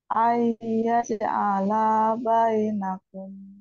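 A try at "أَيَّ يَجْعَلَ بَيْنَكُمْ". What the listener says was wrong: Tahan. Nun, sukun ketemu ya ini harus digunah. Ya, digunah. Didogongkan. Ai, ai gitu ya. Ayyaj'ala bainakum.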